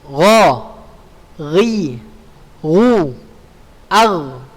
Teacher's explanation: huruf ghain ya, makharijul hurufnya berada di tenggorokan atas.